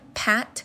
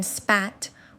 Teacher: In the word pat, we produce a strong P with a puff of air, but in spat, we produce a softer P without that air puff. These are different allophones of the same per-ch-a phoneme.